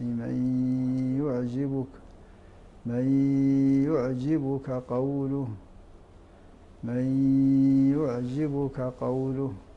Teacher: النون الساكنه قبل الياء فتدغموا ادغاما ناقصا بغنه وتلاحظون في المصحف انها تضبط اي يشعل عليها السكون وذاك اشاره